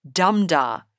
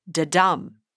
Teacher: That beat is called a trochee, dumda, instead of the normal iambs, which start with an unstressed beat like this, da-dum.